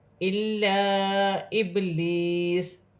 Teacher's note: با ساکن ہے، با حرف قلقلہ میں سے ہے، قلقلہ کے ساتھ ادا کیا جائے گا. ابلیس یا ساکن سے پہلے زیر یا مدہ بنے گی، ایک الف کی مقدار کھینچ کر پڑھا جائے گا.